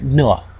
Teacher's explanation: and aspirated versions here we have a nasal which means that we have complete cutoff of airflow because of the tongue at the alveolar Ridge and we're letting a little bit of air come out of the nose